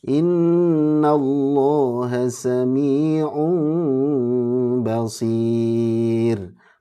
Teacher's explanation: Basir rnya tipis karena diawali kasrah